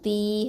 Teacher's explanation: தா கெஸ்ரா யா சுக்கூன் தீ, 2 ஹரக்கத்தை நீட்டணும்